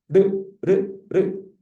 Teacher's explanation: 혀끝이 입천장을 튕기면서 내는 소리야. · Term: 탄서음